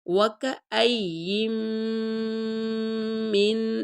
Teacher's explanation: ساتھ، وَكَأَيِّن مِّن، میم کو اس نون کے ساتھ ملائیں گے، یہاں میم پہ کے اوپر بھی غنہ ہو رہا ہے اور نون پہ کے اوپر بھی غنہ ہو رہا ہے